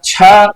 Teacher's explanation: छा is equal to चा plus महाप्राण